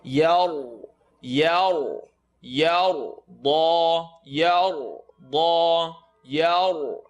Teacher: Ya is light, ra is heavy because of the line on top.